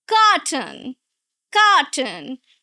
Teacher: Two syllables, right? You're going to stress the first syllable.